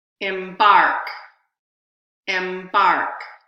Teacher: you're going to hear two vowels but only the second vowel is going to have stress or is going to be primary stress